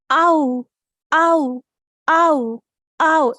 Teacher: It's also a diphthong. See, it's a vowel sound and a diphthong because the mouth is changing its position.